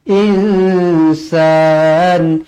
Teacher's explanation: Nun kosong bertemu Sin ikhfa Hakiki di baca dengung dua harakat